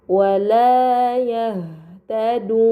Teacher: Ini dinamakan mad arid. Maka harus dibaca panjang selama enam harakat